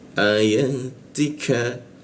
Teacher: Ka masuk ke ka di siku tenggorokan, lidahnya kita turunkan sehingga membaca ka itu ada hembusan udaranya dia